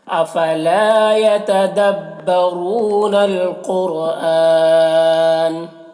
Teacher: یہاں پر وقف کی صورت میں مد عارض وقفی ہوگا، اور اس میں طول توسط قصر تینوں جائز ہوتا ہے۔ طول اولا ہوتا ہے، پھر توسط، پھر قصر کا مرتبہ ہوتا ہے۔